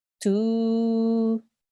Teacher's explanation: You elongate the dhamma sound for 2 seconds. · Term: waw mad